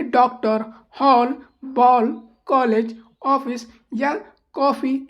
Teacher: ठीक है, जैसे आ ध्वनि, आ और ओ ध्वनि की मध्यवर्ती ध्वनि है। मध्यवर्ती मतलब ना तो ये आ प्रोनाउंस होता है नहीं ओ, इसे औ करते हैं। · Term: आगत स्वर